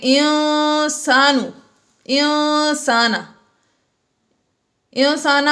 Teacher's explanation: انسانا میں نون ساکن کے بعد سین آ گیا حروف اخفا میں سے، اس لیے ہم نے یہاں پر اخفا کیا یعنی غنہ کر کے پڑھا